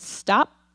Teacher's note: Was there air for that P? That was a plain P.